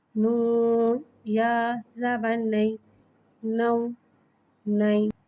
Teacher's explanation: یالین کو بغیر کھینچے بغیر جھٹکا دیے نرمی سے معروف پڑھیں گے، اور زبر کو منہ کھول کے ادا کر کے پڑھیں گے۔